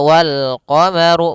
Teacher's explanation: Kemudian pada lafaz ru, ru-nya dibaca tebal karena dia huruf ra yang berharokat dhammah